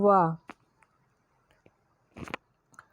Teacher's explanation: वा को बोलते समय दांत और होंठ दोनों का प्रयोग किया जाता है।